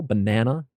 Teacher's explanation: I mean for nouns in English the emphasis with three syllables the emphasis usually is on the middle syllable